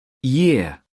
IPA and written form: jɪə (year)